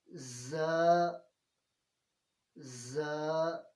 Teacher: اور یاد رہے کہ زا کو یا یہ جو سیٹی والے حروف ہیں جب بھی ان کو پڑھنا ہے تو زبان دانتوں سے نہیں لگنی چاہیے، بلکہ دانتوں سے تھوڑا سا پیچھے رہنی چاہیے